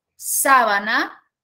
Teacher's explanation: sábana donde la mayor fuerza de voz recae en la tercera sílaba